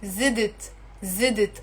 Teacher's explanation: even Lebanese speakers, as native speakers, we end up adding a and we say zidit